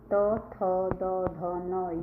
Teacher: आपकी जीभ दांतों से लगेगी जब आप उनको बोलोगे। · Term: दंत्य